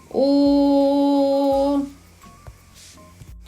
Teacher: Він напіввідкритий. Повітря виходить вільно. Губи округлені. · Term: Звук О